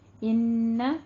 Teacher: ان کو 2 کاؤنٹ کریں، غنہ واجبہ ہے